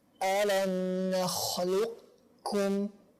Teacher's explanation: membacanya dengan disisipkan sisa ketebalan yang ada di qaf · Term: idgham naqis